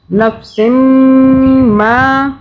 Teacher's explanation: ہم میم کی آواز کو 2 مرتبہ بنا رہے ہیں، نفسم، میم پہ ہم گننا 2 سے 3 سیکنڈ کا کریں گے، اوپر تشدید ہے